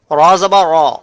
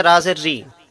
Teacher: एक आवाज हमारी मोटी निकल रही है, यानी पुर निकल रही है, और दूसरी आवाज हमारी नर्म और बारीक निकल रही है, जैसे राजेर री, ये बारीक आवाज है।